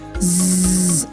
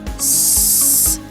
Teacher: You could feel the z produces a vibration, so it's a voiced sound, and s or the s sound is voiceless.